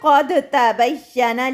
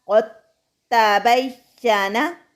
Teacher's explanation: ہمیں دال ساکن کو تا میں مدغم یعنی چھپا کے قاف کو ڈائریکٹ تا سے یعنی تا مشدد پر زور دینا ہے اور دال کو مدغم یعنی چھپانا ہے تا کے اندر.